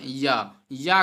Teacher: या जो है आपका तालव्य है, तालु से बोला जाता है